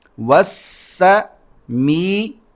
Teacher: سین دانت ملا کر سیٹی کے ساتھ نکالنا ہے